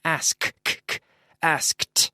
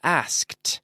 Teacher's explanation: Asked. So you have the K and into the T sound. It's a D, but it sounds like a T.